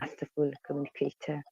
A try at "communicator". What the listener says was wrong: So you're stressing Kate. Usually, at least in North America, you're going to hear the stress on communicator. So it's not communicator, it's communicator.